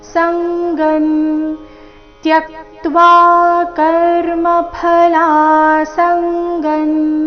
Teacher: ಸಂಗನ್ ಸ ಮೇಲೆ ಆಘಾತ